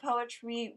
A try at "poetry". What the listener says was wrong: You said poetry wrong. You said poetry. You said it wrong. You said it with a W.